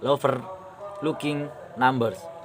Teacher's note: One stressed syllable followed by one unstressed syllable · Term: trousy